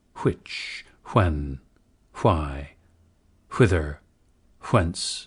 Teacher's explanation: WH should be aspirated in words like which, when, why, whither, whence, etc., where today's dominant pronunciation is w.